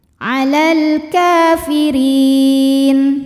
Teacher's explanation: karena ada fathah panjang pada huruf kaf, maka kaf panjang 2 harokat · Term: mad tabi'i